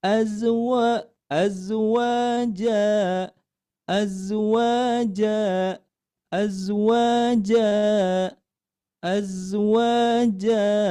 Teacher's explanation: ketika membacanya diayunkan kemudian sambil nadanya sedikit naik dari nada sebelumnya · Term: nada keempat